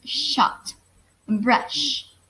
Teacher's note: post-alveolar, which is articulated with the tip of our tongue held close to the back of the teeth ridge